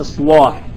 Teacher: نوع من التسهيل من تسهيل الكلام ايوه ا تسهيل الكلام لان عندما يكون مثلا اصلاح الصاد مفخمه يتناسب معها تغليظ اللام